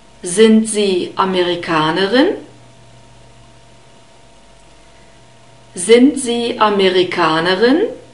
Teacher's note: Amerikanerin contains two guttural R sounds, so rub it at the back, between the back part of the tongue and the uvula. Don't roll it, so it's not R, it's R.